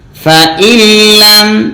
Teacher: নুন সাকিন ইদগাম লাম থাকার কারণে